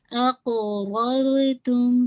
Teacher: را کو ہیوی اور را کے ساتھ مرج کیجیے گا